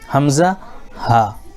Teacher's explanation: یہ حمزہ اور ہا جو ہے شروع والے حلق سے ادا ہوتا ہے جو سینے کی طرف ہے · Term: شروع حلق